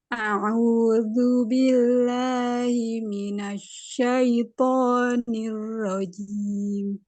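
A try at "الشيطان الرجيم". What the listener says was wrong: Pakai shin, Bu. Syaitoni. Syaitonir rajim.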